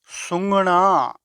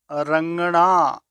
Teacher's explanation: ਸੁੰਘਣਾ ਖੁਸ਼ਬੂ ਲੈਣਾ ਰੰਗਣਾ ਰੰਗ ਕਰਨਾ ਗਾ ਅੱਖਰ ਨੂੰ ਬੋਲਣ ਵਾਸਤੇ ਖੁੱਲੇ ਮੂੰਹ ਨਾਲ ਜ਼ੁਬਾਨ ਅਤੇ ਤਾਲੂ ਦੇ ਪਿਛਲੇ ਹਿੱਸੇ ਨੂੰ ਹਲਕਾ ਜੋੜ ਕੇ ਗਲੇ ਵਿੱਚ ਆਵਾਜ਼ ਕੱਢੀ ਜਾਂਦੀ ਹੈ